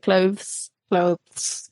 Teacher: tongue through the teeth and then behind the teeth for the es bit